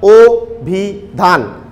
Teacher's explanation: কারণ এই আদ্য অ এর পরে খেয়াল করো রস্বই ই রয়েছে, এই যে রস্বই আদ্য অ এর পরে, আদ্য অ এর পরে রস্বই ই রয়েছে বলে আদ্য অ এর উচ্চারণ আর অ এর মতো থাকছে না, ও এর মতো হয়ে যাচ্ছে।